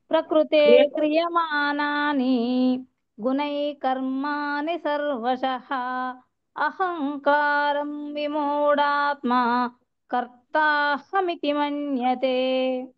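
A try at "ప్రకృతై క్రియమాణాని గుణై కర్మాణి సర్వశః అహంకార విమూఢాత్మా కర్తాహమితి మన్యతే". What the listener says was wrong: హరి హరి బోల్ మాతాజీ, excellent.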